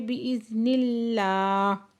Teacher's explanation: باذن اللہ اس میں جلالہ سے پہلے زیر ہے تو نرمی سے پڑھیں گے